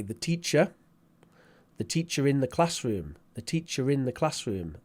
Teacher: so we do insert the r as a linking sound when the following syllable begins with a vowel sound